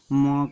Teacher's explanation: म कह दिया जाए तो ऐसा लगेगा कि नाक से ध्वनि बाहर निकल रही है